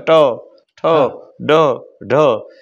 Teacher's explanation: તમારે ટઠ ડઢણ બોલવા છે તો એ મૂર્ધન્ય છે